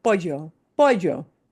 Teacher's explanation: And that double L is a y sound.